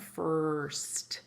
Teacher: So this is a situation, there are a lot of words called R-controlled vowel words, meaning the R is controlling the vowel sound in that whole word. And that's why you don't hear the vowel.